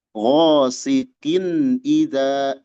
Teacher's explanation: Disebut izhar karena tanwinnya jelas. Wasikin halqi karena huruf yang menyebabkan dia izhar berasal dari makhraj al-halqi. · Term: izhar halqi